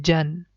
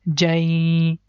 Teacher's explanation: And if the next letter Ya is coming, so it means that this Jan sound is going to merge with Ya and sound becomes Jai